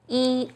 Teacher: when e is used as a number it's the first flat tone